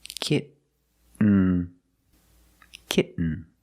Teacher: You don't release, and then you fall to an N, kitten. When you make the stop T, the tongue is up, almost in the N position, so you don't have to change much.